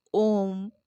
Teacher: प्लुत बोलते समय ह्रस्व से 3 गुना समय लगता है